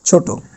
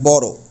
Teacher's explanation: বিশেষণ রূপে ব্যবহৃত শব্দের অন্ত অ এর উচ্চারণ কি হবে? ও এর মতো হবে।